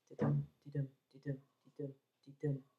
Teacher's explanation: What's common to both forms, of course, and to Shakespeare's plays, is the fact that they're written in iambic pentameter. So we have 10 syllables in each line, 5 beats in each line, unstressed, stressed syllables, like a heartbeat.